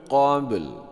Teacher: qalqalah sughra, ini waqaf mematikan 2 huruf, dua-duanya harus nampak, pantulnya harus nampak, lamnya harus nampak